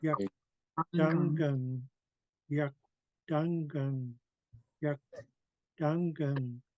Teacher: So we're rounding our lips. We're going to high tone and then we're going to low tone.